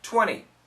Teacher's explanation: this N sound is strong and it cancels out the T